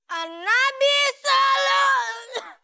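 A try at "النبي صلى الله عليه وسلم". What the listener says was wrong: awalnya jangan tinggi-tinggi dulu, Sob. Nih, denger ya nih. Nabi sallu alai.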